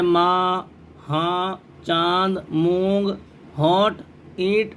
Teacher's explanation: غنہ ناک میں آواز لے جانے کو کہتے ہیں۔ نون غنہ نون کی آواز کو ناک میں لے جا کر پڑھنا۔